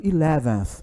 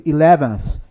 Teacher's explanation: Esse aí é o som do TH, é o TH que não é pronunciado, é o unvoiced